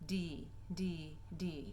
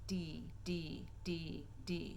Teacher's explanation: the front part of my tongue, slightly behind the tip of my tongue, is touching the roof of my mouth where my teeth and the roof of my mouth meet